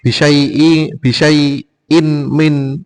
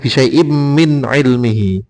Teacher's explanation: Min ainya jelas karena idhar, syai'imnya masuk ke dalam mim karena idgham bihuna